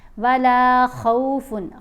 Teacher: خا کے اوپر زبر ہے، واو ساکن ہے، لین حرف ہے، اس کی نہ زبر جیسی آواز ہوتی ہے نہ پیش جیسی آواز ہے، درمیانی آواز بنے گی